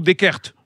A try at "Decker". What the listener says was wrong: On prononce pas le T à la fin.